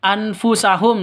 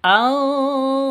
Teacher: Cara bacanya itu anfusahum, bukan jangan ditambah dengan ng. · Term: samar